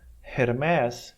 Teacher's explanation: Então, portanto, vai ter um som soprado. Bota a mão na frente da boca e fala Hermes. Você vai sentir um ventinho no Her.